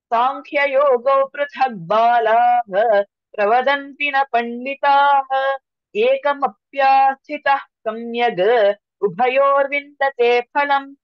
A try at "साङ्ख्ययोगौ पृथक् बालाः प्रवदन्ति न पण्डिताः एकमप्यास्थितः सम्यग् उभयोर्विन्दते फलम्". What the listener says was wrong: Very good.